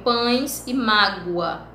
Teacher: Aí nós temos lá, por se parecerem foneticamente ao i, u, i, e, também chamado de i, o o, são considerados semivogais em alguns casos, como em pães e mágoa. Pães, como se o i, o e fosse som de i, tem som de semivogal, mágoa, o o tem som de u.